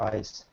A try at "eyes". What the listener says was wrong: You know, when you pronounce the word eyes, you have to make a Z sound, otherwise it will sound like ice, you know.